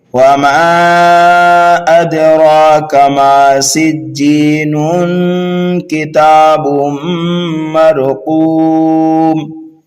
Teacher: تنوین کے بعد کاف حروف اخفا میں سے آنے کی وجہ سے یہاں پر اخفا کریں گے, یعنی تنوین کی آواز کو ناک میں چھپا کر ایک الف کے برابر غنہ کر کے پڑھیں گے